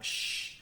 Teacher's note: Kemudian lebih belakang lagi ada palato alveolar, yaitu bunyi sh. Nah, walaupun bunyinya juga kita bisa mendengarkan secara satuan sh, tetapi di dalam vokal chord, vokal track kita itu tidak ada getaran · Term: voiceless